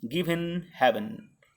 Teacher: A rhymed stress syllable is followed by rhymed unstressed syllable, as in given heaven. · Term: feminine rhyme